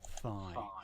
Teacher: The tongue is between the 2 teeth and it doesn't touch them, and it's voiceless. It does not produce any sound, any vibration. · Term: interdental